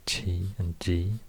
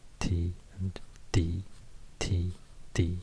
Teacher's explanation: the Arabic letters T and D are pronounced a bit more to the front in the mouth, more to the teeth. So if a standard English T and G is pronounced like that, T and G, then maybe the Arabic is more T and D, T, D, more with the tongue to the teeth.